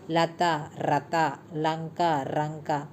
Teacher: ల కి బదులుగా ర వాడే దోషం